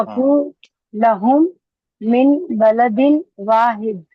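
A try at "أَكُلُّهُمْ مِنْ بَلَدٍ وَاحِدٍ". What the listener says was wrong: अकुल्लुहुम मिन बलदिन वाहिदिन। ही पड़ेगा सिस्टर, ये क्लास में कोई चारा नहीं है, आखिरी हरकत पढ़नी है।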